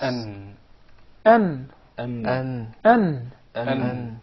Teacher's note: their origin come from the tip of the tongue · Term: noon